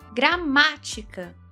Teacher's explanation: Gramática tônica na antepenúltima, ou seja, proparoxítona.